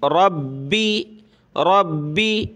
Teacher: با کے اوپر تشدید ہے تو اس کو سخت کرنا ہے لیکن کھینچنا نہیں ہے